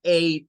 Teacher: combinación e ig H el número ocho basta con decir eight la gh en este caso pierde su función es decir no suena y Solo queda sonando la parte vocal